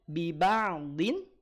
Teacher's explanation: Kalau berhenti di sini biba'din Ain jangan menjadi tebal